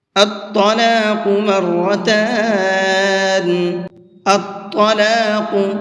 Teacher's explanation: اس لفظ کے اندر طا کو بھی اور قاف کو بھی دونوں کو پر کر کے پڑھیں گے، یعنی منہ بھر کے پڑھیں گے۔ مرتان، اس کے اندر را کو منہ بھر کے پڑھیں گے۔